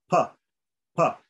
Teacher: my lips come together, and then I let the air out like that. So there's complete contact is made.